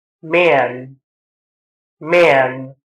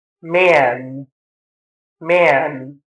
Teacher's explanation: there tends to be a nasal resonance present in the a vowel sound, which is called the diphthong.